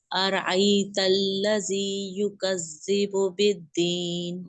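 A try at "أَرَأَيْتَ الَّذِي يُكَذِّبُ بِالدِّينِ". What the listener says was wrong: واہ کے لیے ہونٹ گول کریں پلیز۔ زال کو سختی سے نہیں پڑھنا، یکذب بالدین، یکذب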